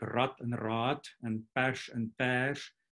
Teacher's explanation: differ only in the length of the vowel, and that creates a different word, whereas in Spanish, there's no phonemic length contrasts. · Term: phonemic vowel length distinction